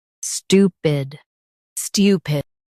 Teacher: Stress stew and keep pid light.